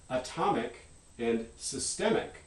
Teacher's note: when you move the stress by putting this ic suffix on, it actually stresses the second syllable